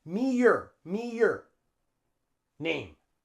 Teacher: we put a y sound in the middle